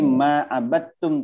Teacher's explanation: Karena bertemu dengan ta, ya, semisal dia. Jadi langsung dalnya hilang. Qalqalahnya tidak dibaca. Langsung masuk ke ta. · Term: Idgham mutajanisain